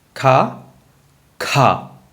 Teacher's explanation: easy way tip to get this Alpha Prana versus mahaprana is you get the sound ha at the end